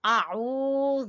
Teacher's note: عین گلے کے وسط سے، گلے کے درمیان سے، اور اس کو کھینچیں گے حروف مدہ کی وجہ سے۔ · ذال زبان کی نوک اور سامنے والے دو دانتوں کے سرے سے